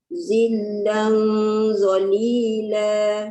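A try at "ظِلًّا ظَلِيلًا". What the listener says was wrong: Bunda pastikan setiap kali menyebut Allah, hujung lidah mesti keluar lidah. Zillan zalila. Baru dia tak ada bunyi sofir.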